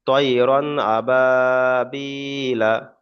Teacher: নরম আওয়াজে তাড়াতাড়ি পড়তে হবে, টান দেওয়া নিষেধ, মানে টান দেওয়া যাবে না। লিনে কোনো সময় টান হবে না, মাদ্দা টান হবে। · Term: ইয়ালিন